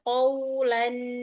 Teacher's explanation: bunyi terakhir itu masih ada aliran suaranya